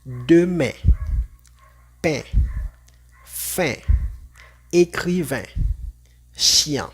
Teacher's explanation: vamos a leerlos igual a una EN en el español, pero sin escuchar el sonido de la N o de la M al final.